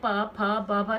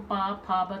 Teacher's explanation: तो इसको आप ओंठों से बोल रहे हैं। आप उच्चारण करके देखो, प फ ब, तुम्हारे दोनों ओंठ क्या हो रहे हैं? मिल रहे हैं इस पे। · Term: ओष्ठ